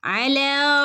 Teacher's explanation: ലാന്റെ ഉള്ളിൽ എന്തുണ്ട് ഒരു അലിഫ് മദ് രണ്ടനക്കം നീട്ടി കൊടുക്കുക